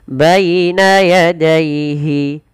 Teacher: Lafal baina dan daihi ini kedua-duanya dibaca dengan bacaan lin. Yaitu dengan melembutkan bunyi suara ya yang dilembutkan